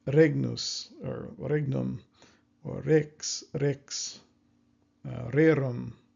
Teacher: they are using that kind of tapping R, as far as I understand